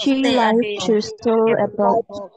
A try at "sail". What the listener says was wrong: Sail, not S-A-L, sail a boat.